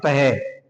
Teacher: विसर्ग का उच्चारण करते समय है की ध्वनि निकलती है।